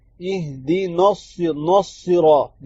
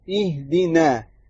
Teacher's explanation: نون کو موٹا نہیں کرنا، پتلا ہی رکھنا ہے